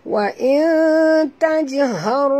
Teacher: Nun mati bertemu ta. Kita kena sorokkan bunyi nun ke dalam ta. Disertai dengung ya. Dua harakat. Ikhfa' haqiqi.